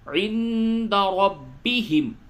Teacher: عند نون ساکن کے بعد دال آیا اس جگہ پہ اخفا ہوگا